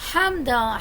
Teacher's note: ہا حلق کے درمیان والے حصے سے، دال پہ دو زبری ہیں، میں نے اخفا کیا.